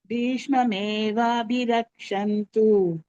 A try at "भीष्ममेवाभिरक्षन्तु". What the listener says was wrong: மகாபிராணாஸ் இருக்கு பகினி, மறந்துடாதீங்க.